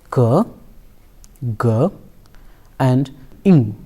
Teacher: palate is a passive alligator during the production of wheeler consonants the back of the tongue raises and makes contact with the soft palate and the sounds are produced there are total three-wheeler consonants in English they are curved ger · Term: velar consonants